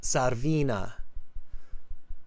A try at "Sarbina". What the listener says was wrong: Not V. It's B. Sarbina.